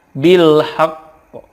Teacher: Lanjut, bil haqqi, ketika wakaf dibacanya bil haqq. Karena qaf ini ada qalqalahnya, ditekan kemudian dipantulkan.